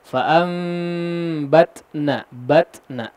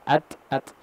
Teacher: ada sifat hams untuk huruf ta yang khususnya ketika disukunkan akan cukup nampak ya. Ketika disukunkan akan sangat nampak bahkan at.